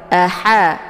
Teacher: atau biasa dikenal dengan ha kecil ini adalah ha pedas jadi ada suara kepedasan yang keluar dari tenggorokan